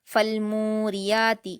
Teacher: بات جو نوٹ کرنے کی ہے، آیت نمبر 2 میں فالموریاتی، میم پر واو مدہ ہے اور را پر زیر کی حرکت ہے، فالموریاتی، اس لیے میم کو کھینچا جائے گا، را کو نہیں کھینچتے